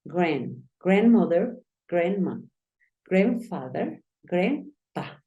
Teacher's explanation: Acuérdate que esa A suena más como una E.